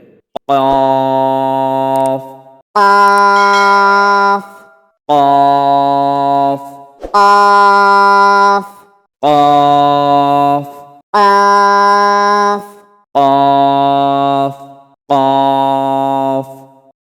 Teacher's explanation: আবার বলি, জিহ্বার গোড়া বরাবর উপরের তালুর সঙ্গে লাগাইয়া ২ নোক্তাওয়ালা কফ। জিহ্বার গোড়া বরাবর উপরের তালুর সাথে লাগিয়া কফ উচ্চারণ করিতে হবে। কফ قاف কফ قاف কফ قاف কফ কফ।